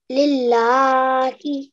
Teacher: So if the lam before has got a kasra underneath, and it's Allah's name, then that means that we need to not give it a thick sound. It's very normal, lillah, normal lam sound.